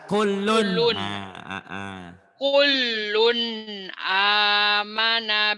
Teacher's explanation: karena tanwinnya ketemu Alif Idhar jadi bunyi n-nya jelas